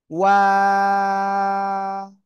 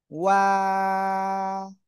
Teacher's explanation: দুই ঠোঁট গোল করবেন, প্রথমে গোল, মাঝখানে দুই দিকে প্রসারিত হবে, শেষে এসে আবার গোল হবে।